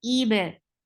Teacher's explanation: Jaiz, it can be there and you can drop it, but we make sure that we make it 4 haraka long. Ib for kasra, give E sound, and hamza is a very sharp sound.